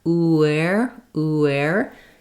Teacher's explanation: So you'll naturally connect and glide. And as I move from U to air, uer, uer, you'll hear my lips naturally make a W glide in there, ûɛri. If that W sound is missing, you may end up sounding like there's fewer syllables there.